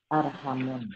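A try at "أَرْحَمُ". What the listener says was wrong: Arhamu, nggak boleh tanwin, arhamu. Arhamu. Nggak boleh pakai tanwin. Dia isim. Iya, kenapa tidak boleh tanwin? Setiap isim yang bentuknya seperti fi'il, maka tidak boleh tanwin.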